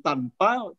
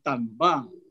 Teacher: dalam bahasa Arab tidak ada bunyi p maka ketika mengatakan tanpa berubah menjadi tanba